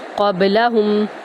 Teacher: قاف کو پر کریں گے، با پر کلکلا کریں گے